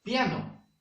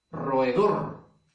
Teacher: la mayor fuerza de voz recae en la última sílaba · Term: aguda